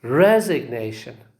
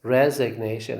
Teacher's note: the first syllable receives a secondary stress and the third syllable receives primary stress